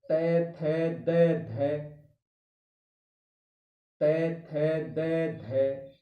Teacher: यानी त थ द ढ यानी हमारी आगे की जो जीभ की नोक है, वो दांतों को टच करती है, स्पर्श करती है, छूती है उसको आगे से। जीभ की ऊपर की नोक के द्वारा ऊपर के दांतों का स्पर्श करना। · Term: दंतेय व्यंजन, दंत व्यंजन, दंते व्यंजन